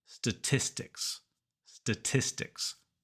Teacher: at the front statistics not EST statistics but statistics number two the T in the middle makes a t sound not a D sound